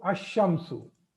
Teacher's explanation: in all the Shamsiyah letters, lam is not pronounced.